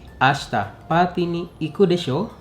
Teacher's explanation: Desho is spoken with a rising intonation.